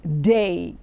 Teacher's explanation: it has a consonant and then you have a diphthong, the D sound and the A sound. So when you have these two come together, then it becomes the day.